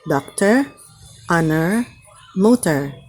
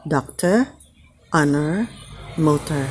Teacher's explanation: pag yung dulo ng word ay hindi stressed, gumagamit ng schwa sound. It's especially followed by an R yung O.